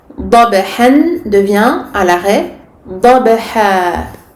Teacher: Donc ici on va avoir fathatin qui vont se transformer en fatha alif soukoun, donc deux temps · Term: المد العوض